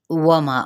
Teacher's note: वाव होंठों के ना तमाम गुलाई के साथ